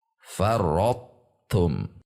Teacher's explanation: Karena taknya bertasydid sehingga to-nya dimasukkan ke ta. Dan huruf yang berbunyi tu terakhir adalah huruf ta. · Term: idgham